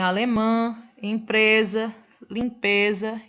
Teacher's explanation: as nasais, o ar não passa totalmente pela boca. Ele fica um pouco preso na cavidade nasal, no nariz.